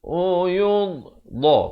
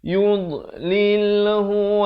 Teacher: Makhrajnya di tepi lidah.